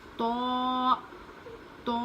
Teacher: تا کو ہم باریک پڑھیں گے اور تو کو منہ بھر کے پڑھیں گے، موٹا پڑھیں گے